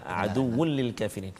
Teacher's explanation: tanwin bertemu dengan lam, kita tak boleh dengung, hukum dia idgham bila gunnah. Maksudnya masukkan bunyi tanwin tu ke dalam lam tanpa dengung.